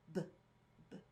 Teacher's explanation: Remember, don't add that schwa